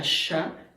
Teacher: el español de Chihuahua, que tiene ese sonido posalveolar muy característico, la sha, ¿no?